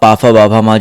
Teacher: फा बोलो तो दोनों ओठ टच होंगे। बिना ओठों के प्रयोग के आप पा फा बा भा मा जो है ओष्ठ्य वर्ग को नहीं बोल पाओगे।